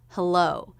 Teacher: this is a two-syllable word with stress on the second syllable hello so it's that second syllable with the up down shape · it's that second syllable with the up down shape of the voice the first syllable will be pretty flat